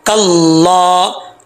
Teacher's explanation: ये हा जो है ये भारी आवाज़ के साथ जो है अदा किया जाएगा, इसका ताल्लुक जो है वो सीने से है, ठीक है।